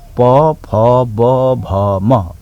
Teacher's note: दुईटा ओठ जोडिएर उच्चारण हुन्छ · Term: ओष्ठ्य